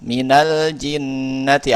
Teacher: nun sukunnya dihidupkan menjadi fathah sehingga bisa dibaca dengan normal. Minal jinnati awalnya min al jinnati tapi difathahkan jadi minal jinnati. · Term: mutaharik bil fathah